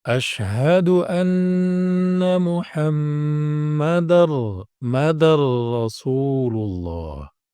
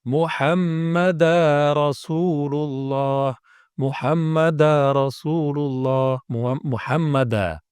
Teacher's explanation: tanwin bertemu dengan ra ya jadi langsung ini lompat seakan-akan ya langsung dari Dal ini langsung ke Ro rnya seolah-olah Jadi tasdid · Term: idgham Kamil bila ghunah